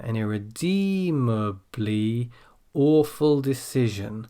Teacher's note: when we get to the end of the list, we come back down again.